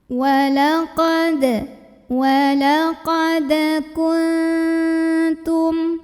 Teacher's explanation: nun sukun ini dibunyikan samar-samar menuju huruf ta disertai dengungan. Jadi dari nun kita siap-siap mau bilang ta ya ke makhraj huruf ta. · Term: ikhfa aqrab